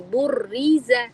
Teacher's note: پہلا را جو ہے وہ موٹا ہوگا اور دوسرا را جو ہے اس میں اسمائلی فیس لازم کرنی ہے